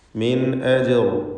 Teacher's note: അലൈഹി മിൻ അജ്ർ, മിൻ എന്നതിൽ സാക്കിനത്ത് നൂനും ശേഷം ഹംസയുമാണ്. ഇവിടെ ഇൽഹാർ ഹൽക്കി നൽകി സാക്കിനത്ത് നൂനിനെ വെളിവാക്കി മണിക്കാതെ ഉച്ചരിക്കണം.